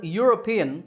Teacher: the word european starts with a yeah sound